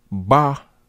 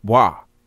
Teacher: If you pronounce ba, such as baba, you're not necessarily ba, but you are barely touching the lips. Depending on the plosiveness and the quickness of the lips removing themselves when you speak, it could pronounce ba, or it can also be pronounced wa.